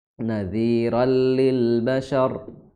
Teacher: ra tanwin bertemu lam jadinya idgham bila gunnah